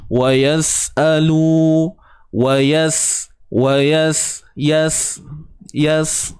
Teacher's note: Kemudian wa yas'alu, huruf wa pada atas wa, yas, matikan sin ni macam biasa, hujung lidah duduk dalam, jangan keluarkan.